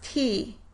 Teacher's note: So, the word “teeth” is pronounced /t/ - /i/ - /θ/. So you would remove the /θ/ from the coda of the syllable and wind up with just /ti/. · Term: final consonant deletion